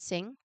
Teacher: back of your tongue creates a seal, and the sound is sent through your nose.